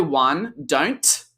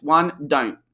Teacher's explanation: the T has dropped completely, almost all NT contractions it'll drop